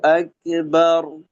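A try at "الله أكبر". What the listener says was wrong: যেটা হচ্ছে, আচ্ছা আপনার ক্ষেত্রে যেটা হচ্ছে যে কাফের আওয়াজ দ্বিতীয় অংশে একটু হচ্ছে আক, ক না হয় আক, আক, আক, একটু বাতাস থাকবে আর কি। আল্লাহু আকবার।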